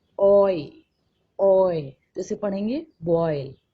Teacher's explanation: टू sounds आएंगे, लेकिन पहले वाले उसका वॉवल का साउंड स्ट्रॉन्गर होगा और सेकेंड वन का क्या होगा? वीकर होगा। एक वॉवल से साउंड ट्रांसफर होगा दूसरे वॉवल पर। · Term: वॉवल डिप्थोंग